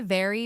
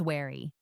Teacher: Feel your top teeth lightly touching your bottom lip for a very and your lips just rounded for wary.